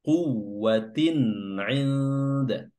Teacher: Izhar halqi ya izhar jelas ya tanwinnya dibaca jelas dan halqi diambil dari huruf ain yang keluar dari halq atau tenggorokan. Quwwatin inda huruf ain yang keluar dari tenggorokan tengah wasatul halq ya berharakat kasrah bertemu dengan huruf nun yang sukun dan bertemu dengan huruf dal.